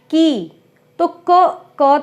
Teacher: क तो हमने बहुत थोड़ा बोला, और जो उसकी ई की मात्रा थी वो हमने बहुत लंबी बोली, की। उसने कहा, तो क, हा, आ, ह थोड़ा बोला, आ, यानी हम जितने भी वर्ण बोलते हैं उनमें स्वरों का ही उच्चारण अधिक होता है, वर्ण बहुत कम होते हैं।